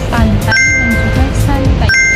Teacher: Contoh yang pertama ada diftong ai. Nah, ini kombinasi dari vokal a yang bergeser ke i · Jadi kita perhatikan kata ai di akhir kalimat ya. Kata ai di akhir kalimat itu tidak dipisah, melainkan cara pengucapannya itu digabung menjadi pantai dan juga santai.